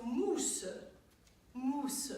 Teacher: So the OU in French is an OO sound, pure OO, like the letter U in IPA.